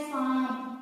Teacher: ठीक है, ऊपर जिसमें भी ऊपर चंद्र बिंदु की मात्रा आ रही है मतलब इसकी साउंड किससे निकलेगी, नाक से निकलेगी, हमारे नोज से निकलती है, तो इसीलिए इसका नाम पड़ गया अनुनासिक।